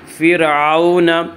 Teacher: را ساکن سے پہلے زیر ہو تو را ساکن کو باریک پڑھا جائے گا، یا را ساکن سے پہلے فا کے نیچے زیر ہے، اسے را ساکن کو باریک پڑھیں گے۔